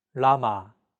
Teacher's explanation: an L but there isn't an equivalent sound in English Lama this sound is actually somewhere between an l and an R sound